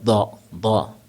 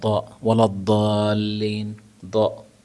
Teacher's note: آپ کے زبان کا بایاں اور داہنا کنارہ وہ آپ کے مولرز سے ٹکرائے گا زبان میں، اور بنے گا دا.